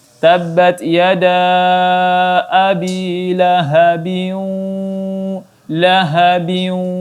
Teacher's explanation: ditahan selama 3 sampai 4 harakat bunyi dengungnya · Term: idgham bi gunnah